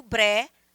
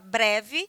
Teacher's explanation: O ves, breves, a palavra breve é uma palavra de 2 sílabas, mas a mais forte é o bre. Ela é uma paroxítona.